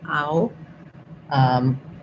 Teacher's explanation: that diphthong ow. So that opens from an open ah to a more closed rounded ow